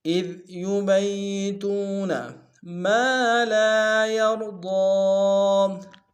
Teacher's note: یبیتون میں یا کے اوپر شدہ زور دیں گے ، تو میں واو مدہ ایک الف دار میں کھینچیں گے، · اذ ذال کو باریک ادا کریں گے